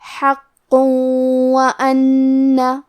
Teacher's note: تو ہم یہ تنوین کو واو میں ملا کے غنہ اور تشدید کے ساتھ یہ حکم کو ادا کریں گے